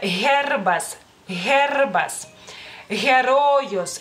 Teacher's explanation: es una consonante bastante rasposa, bastante que proviene, digamos que de la garganta, y es una consonante sonora y se pronuncia en todas las palabras en lituano.